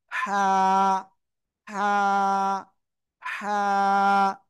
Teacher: তাহলে এটা কি অক্ষর হবে? এই যে গলা, গলার মধ্যখানে চেপে একালিপ টেনে পড়বো, হালকা মুখ দিয়ে বাতাস বের হবে